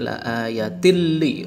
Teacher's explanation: Cara membacanya tanwin dimasukkan ke huruf lam serta tidak memakai dengung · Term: idgham bila gunnah